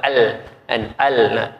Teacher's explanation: Pada tulisan memang tak boleh masuk sebab huruf lam dengan mim makhraj dia tak sama. Lam makhraj dia hujung lidah pada belakang gusi atas. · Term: makhraj lam